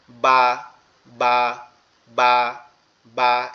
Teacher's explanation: এরপরে বা হচ্ছে আমাদের দুই ঠোঁট থেকে